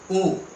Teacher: ओ आ कंठ से निकलता है, ऊ ओठ से निकलता है, तो कंठ और ओठ दोनों से मिलकर के ओ बना है, इसलिए कंठोष्ठ स्वर है।